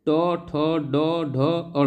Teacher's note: ट वर्ग का जो उच्चारण स्थान है वो मुर्धा है